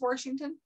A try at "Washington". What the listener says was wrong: There is no R. How many times did you say R? How many times did you say R?